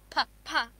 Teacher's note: Now if you say pa, see, the nose is not vibrating.